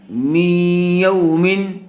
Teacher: نون ساکن کے بعد حروف یرملون میں سے یا آئی ہوئی ہے، اس لیے غنّے کے ساتھ ملا کر پڑھ رہے ہیں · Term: ادغام یا